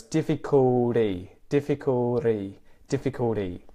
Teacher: even though there's an L in there, ul is a vowel sound.